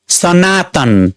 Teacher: यहाँ दोस्रो अक्षर नामा बलाघात परेको छ।